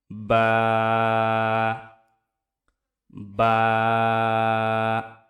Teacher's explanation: দুই ঠোটের যে ভিজা অংশ সেই ভিজা অংশ থেকে উচ্চারিত হবে